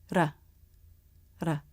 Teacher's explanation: the r is made by bouncing the front part of the tongue against the roof of the mouth